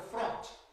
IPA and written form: frɒnt (front)